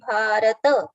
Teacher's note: Ta should be full, not bharat. It should be bharata.